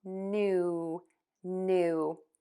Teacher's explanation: Air will move out of your nose for that nasal N sound. And then pucker your lips for the ooh and make that vowel nice and long